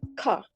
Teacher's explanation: R sounds is not pronounced at the end of words and before the consonants